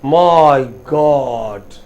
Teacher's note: stress on God not as my sometimes you can say my god but that's rare